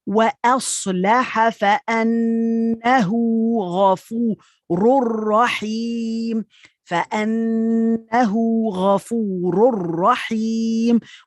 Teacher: Taking out the N sound and connecting with the following one.